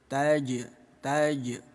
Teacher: Ada jim sukun di tengah bacaan disebutnya qalqalah sugro. Bunyi jim kita pantulkan kecil saja.